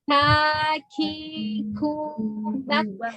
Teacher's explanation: Ka hamas harus ada nafas